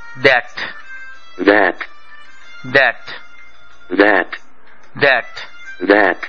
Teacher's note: ইংরেজি দ উচ্চারিত হবার সময় জিহ্বার আগা থাকে উপরের পাটির দাঁতের ঠিক মাথায়